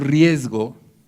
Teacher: A eso se debe una falta de ortografía muy típica en todo el mundo hispánico, escribir riesgo con Z. Porque cuando decimos riesgo, la G es sonora y entonces jala la pronunciación de la S y oímos que es sonora. Aunque en español ya no tenemos distinción en ese punto entre sonoras y sordas, de todas maneras le estamos oyendo y lleva a mucha gente a pensar que rasgo se escribe con Z.